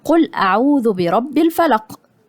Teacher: القاف حرف مفخم مضموم درجة تالتة